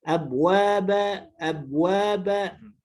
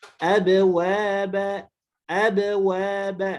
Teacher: Suara ba-nya biasanya menjadi hilang bunyi qalqalahnya.